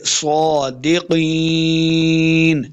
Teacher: سے کھڑی زبر ہے اوپر، دو حرکات لمبا کریں گے، صادقین، قاف کو بھی موٹا پڑھنا ہے، قاف زیر یاقی، یا مدہ ہے، دو حرکات لمبا کر کے پڑھیں گے